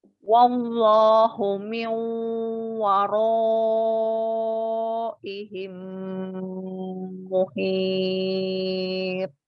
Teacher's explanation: Tebalkan lagi rok fathahnya